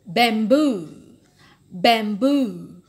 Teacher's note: So, boo is the primary stress.